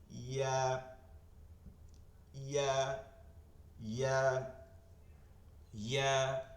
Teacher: জিব্বার মধ্যখান তালুতে গিয়ে লাগবে, মধ্যখানটা একদম তালু বরাবর এভাবে গিয়ে লাগবে